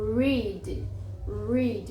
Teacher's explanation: ele é retroflexo ou seja ele é pra dentro ele enrola